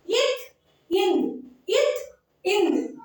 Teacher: மேல்வாய் பல்லின் அடியை, நம்ம மேல்வாய் பல்லு இருக்கு இல்லையா, அந்த அடியை நாக்கின் நுனி பொருந்துவதால் பிறக்கின்றன